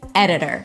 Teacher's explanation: Primary stress on the first syllable. This is where you go high in pitch.